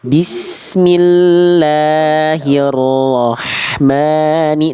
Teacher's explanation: la dan maknya jangan kepanjangan. Cukup 2 harokat aja Bunda.